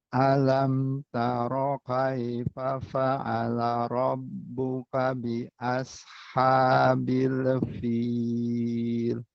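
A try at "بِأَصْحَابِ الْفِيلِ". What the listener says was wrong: Nah, tinggal shot sama lam. Shotnya tebalkan. Be else. Coba ikuti. Be else. Nah, ini bil fil. Gak ada leknya. Bil fil. Bil fil.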